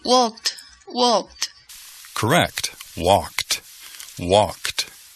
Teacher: Ok, ahora el segundo sonido de los verbos regulares en el pasado todavía tiene las letras E y D al fin, pero se pronuncia el sonido como un T